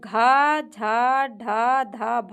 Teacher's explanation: घ झ ढ ध भ जो है ये महाप्राण सघोष है।